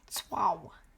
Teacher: Now, the T is not fully silent the way a silent letter works in English. It's what linguists call an affricate, a consonant sound that English doesn't really have. The closest approximation is something like swa or swa, one syllable.